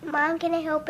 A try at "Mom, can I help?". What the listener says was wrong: Slow. Way too fast. Way too fast. Slow down. One line at a time, okay?